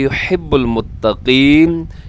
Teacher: युहिब्बुल मुत्तक़ीन, युहिब्बु को युहिब्बु ना पड़िएगा क्योंकि यहाँ पे हा है, हा। मुत्तक़ीन में काफ मोटा रखिएगा, अक्सर क्या होता है ज़ेर की सूरत में काफ बारीक हो जाता है